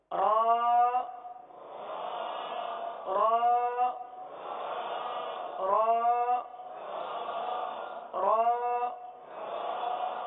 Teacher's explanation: زبان جو ہے یہ دانتوں کے تالو کی جانب والے حصے کی طرف مڑتی ہے اور سیدھی ہوتی ہے، اس طرف جاتی ہے اور سیدھی ہوتی ہے، یہ اس کا مخرج ہے۔